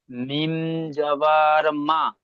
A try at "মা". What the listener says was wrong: মিম টান ছেড়ে যাচ্ছে, অক্ষরের টানগুলো ছেড়ে যাচ্ছে। জি, মিম জাবার,